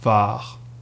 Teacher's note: l'accent sur le A, ça veut juste dire qu'il est plus long